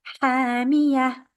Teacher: We change the ta marbuta into a ha.